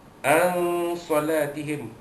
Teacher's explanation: menyembunyikan bunyi nun mati bertemu dengan sad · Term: ikhfa haqiqi